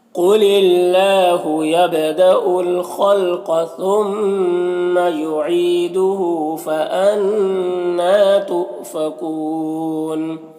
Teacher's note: قل قاف حروف مستعلیہ میں سے پر پڑھیں گے ، نون میں اخفا ہوگا، را میں زبر، را کو پر